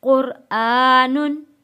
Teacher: आप लोग एक बात हमेशा याद रखिएगा कि जब हम लफ्ज़ को हिज्जे करके पढ़ेंगे, अगर तनवीन को जब हम हिज्जे करके पढ़ रहे हैं तो गुन्ना अदा करेंगे। जब हम लफ्ज़ को मिलाकर पढ़ेंगे तब हमने यहाँ गुन्ना अदा नहीं करना है। कुरआनुन, क्योंकि अब मैं मिला के पढ़ने लगी हूँ।